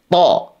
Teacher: Ujung lidahnya sekali lagi nempelnya ke gusi. · Kesalahan berikutnya yang harus kita perbaiki tadi adalah pengucapan huruf to. Huruf to itu teman-teman keluarnya dari ujung lidah kita dengan gusi gigi seri atas. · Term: huruf th